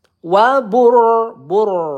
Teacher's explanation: rnya kita baca tebal karena sebelumnya ada huruf berharakat dommah ya